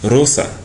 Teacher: So instead of having the English R like R or the R pronunciation will have the R vibrating of the tongue